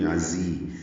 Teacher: دونوں ذات تیز صفیر کی آواز سے ادا کریں گے